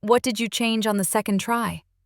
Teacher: The fall at the end made it sound calm and curious, not dramatic.